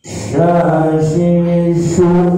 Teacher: Ya, hurufnya shin. Di mana huruf shin keluarnya? Di tengah lidah.